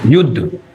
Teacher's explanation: युद्ध शब्द में पहला वाला जो वर्ण है यु। तो इस पर काफी देर तक हम ध्वनि को खींचते हैं और धा एकदम से बोल देते हैं। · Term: स्वर आघात